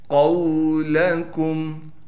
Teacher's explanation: قولکم، قاف کو موٹا کر کے پڑھنا ہے، قاف کو واو سے ملانا ہے، لام کو بالکل نہیں کھینچنا، کاف کو میم سے ملائیں گے بغیر غننے کے